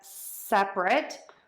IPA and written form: ˈsɛprət (separate)